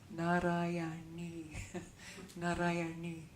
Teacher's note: the n with a dot under it means it's a retroflexive N. So it sounds like you curl it back a little bit.